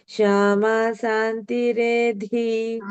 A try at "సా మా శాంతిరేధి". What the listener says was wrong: ఇక్కడ శ్యామ అన్నారు, ఇక్కడ షా కాదు, సామా శాంతిరేధి.